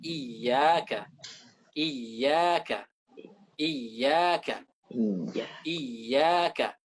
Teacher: Yang harus kita baca di sini adalah ya itu dari wasatul lisan, dari tengah-tengah lidah. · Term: nabroh